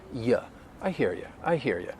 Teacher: most of the time i think people they're going to pronounce you with that schwa